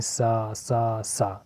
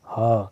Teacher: सा हमेशा अघोष है, और क्योंकि इसके उच्चारण में स्वर तंत्रियों में कंपन कम होता है या ना के बराबर होता है। जैसे हम बोलते हैं सा सा सा, तो हमारे जो कंठ का है वो बहुत कम ही आवश्यकता पड़ा इसको बोलने में, ना के बराबर यूज है।